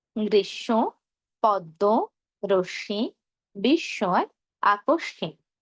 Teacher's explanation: শব্দের মাঝে বা শেষে যদি মফলা যুক্ত হয় তাহলে যেই ধ্বনির সঙ্গে মফলা যুক্ত হয়েছে সেই ধ্বনির দ্বিত্ব হবে।